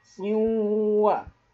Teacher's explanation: Idgham artinya meleburkan atau dimasukkan. Jadi tanwinnya, n-nya masuk melebur ke huruf waw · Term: idgham bigunnah